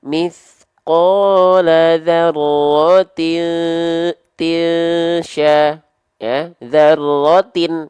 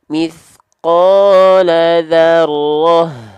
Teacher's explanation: Ya, kalau lanjut kita bacanya jadi ta. Kalau lanjut jadi huruf ta, kalau berhenti jadi huruf H besar sukun.